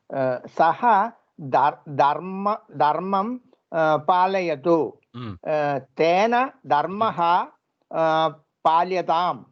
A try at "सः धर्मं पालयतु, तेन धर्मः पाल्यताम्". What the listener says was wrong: सम्यक्, तेन धर्मः पाल्यताम्. बहु सम्यक् कृतं.